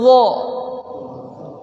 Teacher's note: Ternyata huruf dha ini ujung lidah bertemu dengan ujung gigi atas.